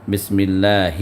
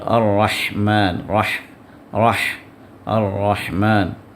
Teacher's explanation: بسم اللہ یہ آخری حلق سے، اور الرحمن الرحمن اور یہ ہا وسط حلق سے، تو دونوں کے ساؤنڈ میں فرق ہونا چاہیے۔